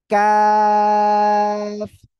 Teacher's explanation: জিহ্বার গোড়া গোড়া থেকে একটুখানি আগে বাড়াবেন বাড়িয়ে এই অক্ষরটা উচ্চারণ করতে হবে